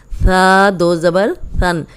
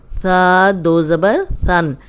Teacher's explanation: اب یہ ثا ہے، امید ہے آپ کو یہ بھی یاد ہوگا، تین نرم حروف ہیں، اس میں ثا جو ہے اوپر سامنے والے جو دو دانت ہیں ان کے اندرونی کنارے پہ زبان رکھیں تو سیٹی کی آواز نہیں آئے گی، ثا نکلے گا. ثا دو زبر ثن، سن نہیں بولنا، ثا دو زبر ثن.